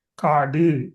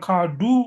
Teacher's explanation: குற்றியல் உகரம் என்றா அங்க குவியாது, கொஞ்சம் உதடு விரியும். ஆனா மாத்திரை அரை மாத்திரையா இருக்கு.